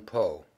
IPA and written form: poʊ (Poe)